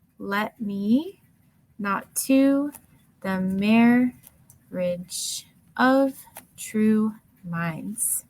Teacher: stressed unstressed dressed unstressed dressed and last one i'm stress stressed ten syllables with that flow of unstressed stress kind of creating that heartbeat sound